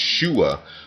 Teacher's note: the word save in Hebrew, which is pronounced shua, with the glottal stop at the end